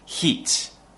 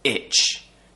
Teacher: for the long vowel the tongue is higher as I said and for the short vowel the tongue is just below the top teeth so it's just near the sharp edge of the top teeth